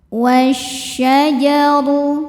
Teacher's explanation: Alif lamnya dinamakan dengan alif lam syamsiyah sebab alif lam menghadapi huruf syamsiyah yaitu shin. Cara bacanya alif lam tidak dibaca, masukkan ke shin. Wasyajaru. Huruf ra dibaca tafkhim karena berharokat dhammah. · Huruf ra dibaca tafkhim karena berharokat dhammah. Cara bacanya ra ditebalkan.